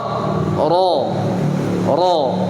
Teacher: dia lebih berisi lebih naik-naik bukan berarti keras contoh roh Oh walaupun Suaranya pelan tidak keras tapi tebalnya ada